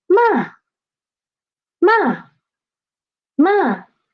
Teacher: And last one, the fourth tone, let's see. It started at the highest pitch and it rapidly dropped to pitch 1.